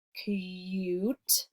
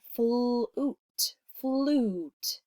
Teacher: we have actually the long U sound, like in cute, where it's actually saying its name, or we have the OO sound, like in flute. It sounds like OO.